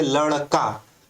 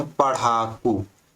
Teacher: ठीक है, उच्छिप्त व्यंजन यहाँ पर हम लिखे नहीं हैं, लेकिन इसको क्या बोलते हैं, उच्छिप्त बोलते हैं, जिनके उच्चारण में जीभ पहले ऊपर उठकर मूर्धा का स्पर्श करे और फिर झटके के साथ नीचे आए।